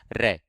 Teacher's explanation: रे जब आप उच्चारण करेंगे तो एक जीभ क्या है, थोड़ी सी लुढ़कती सी दिखाई देगी आपको, और इसमें जीभ में एक वहां पर आपको एक कंपन होगा। कंपन जब होगा तो इसको हम प्रकंपित के नाम से भी जानते हैं, और ये लुढ़कती है इसलिए इसको हम लुंठित के नाम से भी जानते हैं। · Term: लुंठित प्रकंपित व्यंजन